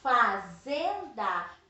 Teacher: Fazenda é o zen. Então, não é a última, é a penúltima. Eu tenho aqui uma paroxítona.